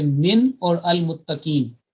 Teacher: یاد رکھیں کہ عام طور پر 90-95% عربی میں جب کسی کو متحرک کرنا ہوتا ہے کسی ساکن کو تو کسرہ کے ساتھ کرتے ہیں، لیکن یہ ہے من، یعنی کہ یہ والا جو حرف ہے اس میں نون کو فتحہ کے ساتھ متحرک کیا جائے گا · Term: نون ساکن